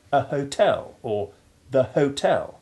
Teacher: It is more usual to sound the H and say a hotel or the hotel, changing the sounds of the indefinite and definite articles accordingly.